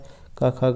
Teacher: गा का उच्चारण स्थान कौन सा है, और ये कंठ से है